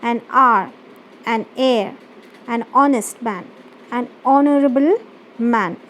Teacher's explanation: these words starts with H, but we do not pronounce the sound of H. So the words that starts with a vowel and the sound that we use a vowel sound, like for example here are heir, honest, honorable.